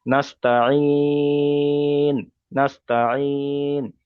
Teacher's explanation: এখানে ধরো আমি আয়াতের মাঝখানে কিংবা শেষ হওয়াতে এটা আসলো, হরফে মাদ্দা আসলো আর হরফে মাদ্দা পরে থামলাম, তাহলে সেক্ষেত্রে এখানে নাস্তাইন বলে ছেড়ে দিলে হবে না। এখানে পড়তে হবে 3 থেকে 4 আলিফ পরিমাণ টান দিয়ে তবে থামতে হবে। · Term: মাদ্দা আরজি ওয়াকফির